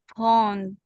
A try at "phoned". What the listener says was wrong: Just a little soft D sound at the end.